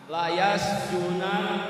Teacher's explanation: Hilang harkat fathahnya, kemudian ditahan tasdidnya.